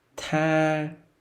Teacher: you have to push the air out of your mouth so that other people can hear the air pushing out of your mouth. That's the key point of the T sound.